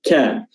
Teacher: makhrajnya adalah pangkal lisan atau pangkal lidah, diangkat dan bertemu dengan langit-langit keras, ya, langit-langit keras bagian dalam, ka, dan dia tidak tebal, ya, dan juga memiliki sifat hams, ya.